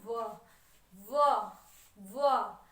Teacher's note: व दंत और ओस्ट को मिलकर बनता है